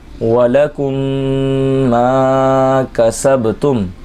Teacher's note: میم ساکن کے بعد دوسری میم آ جائے تو ادغام شفوی ہوگا، غنہ کر کے پڑھیں گے